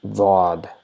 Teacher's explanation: you might have heard a little bit of vibration that is producing a slight Z sound. · So that's why it's obvious that there is no English equivalent for this letter. It is almost similar to D in English, but it is not D. So it is D with a rounded shaped mouth. So, and there's a very slight sound of Z.